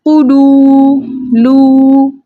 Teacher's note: واو ساکن سے پہلے کسی بھی حرف کے اوپر پیش ہو تو ایسا واو واو مدہ کہلاتا ہے. واو مدہ کو 2 حرکت کی مقدار کھینچ کر پڑھتے ہیں